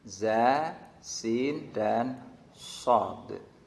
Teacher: ujung lidah menghadap dan mendekat di antara gigi seri atas dan bawah. Itu juga menjadi makhrajnya 3 huruf, yaitu za, kemudian sin dan shad. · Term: makhraj yang nomor 13